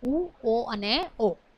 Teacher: એના ઉચ્ચારણમાં હોઠ જે છે એનો આકાર ગોળ બને છે. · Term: પૃષ્ઠ સ્વરો